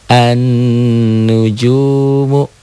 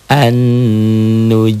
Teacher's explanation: Sunnatal awwalin tuh sun tuh nunnya bertasydid dihilangkan sunatal tuh sunatal awwalin nih beda kan hanya sebuah tanda sidah ini beda beda dibacanya dan artinya juga beda nanti an tuh gunnah bertasydid an nujumu N-nya yang ditahan, U-nya yang dilepas.